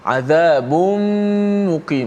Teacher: 'Adzabun muqim, tutup mulut senang. tanwin masuk dalam mim.